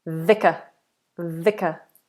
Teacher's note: every V is bottom lip against the top teeth. Fricative, long and vibrating.